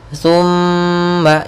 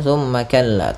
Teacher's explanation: mim dan nun berharakat tasydid. Maka ketika ada keduanya, kita tahan dulu suara kita 2 harakat. Thumma, jangan langsung thumma kalla, tapi tahan dulu. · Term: gunnah